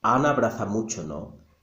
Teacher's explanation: And what's going to happen is that even though there is an A sound in Ana and abraza begins with the A sound, we don't say it twice, we only say it once. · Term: elision